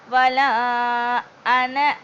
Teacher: 5 அலிஃப் வரைக்கும் நீட்டணும்